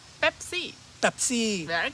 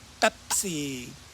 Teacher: now did you notice it's not a p it's a BP kind of a explosive